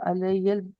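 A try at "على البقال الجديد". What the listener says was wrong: अल अलल अलल अलल, या को नहीं, जो हरफ खाली होता है उसको नहीं पढ़ाते, पढ़ते।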